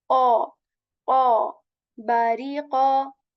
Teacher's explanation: A heavy AW sound at the end.